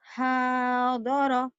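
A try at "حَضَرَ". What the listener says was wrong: Salah. Salah. Nggak ada yang panjang.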